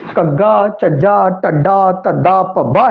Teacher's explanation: ਮੁੱਢਲੀ ਸਥਿਤੀ ਚ ਸੰਬੰਧਿਤ ਵਿਅੰਜਨ ਤੋਂ ਮਗਰੋਂ ਆਉਣ ਵਾਲੇ ਸੁਰ ਉੱਤੇ ਨੀਵੀਂ ਸੁਰ ਉਚਾਰੀ ਜਾਂਦੀ ਹੈ